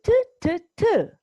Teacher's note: while making the sound T the tip of our tongue touched the beginning of the roof of the mouth